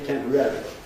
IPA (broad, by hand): ˈtempəˋrerəli